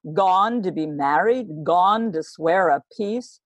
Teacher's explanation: has given her this strong beat to start off the scene this is called a trochy stressed and then unstressed